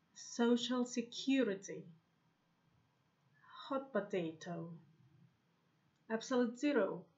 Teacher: Most adjectives, noun, compound nouns have main stress on the second part and secondary stress on the first part.